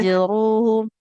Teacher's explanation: bibirnya tetap rapat dulu. Alirkan dulu huruf mimnya.